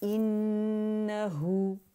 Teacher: इन हु के लिए complete rolling होगी लिप्स की